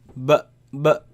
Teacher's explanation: the sound is b, comes from the lips. B. It is elongated, it is stretched because of the alif following it. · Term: letter ba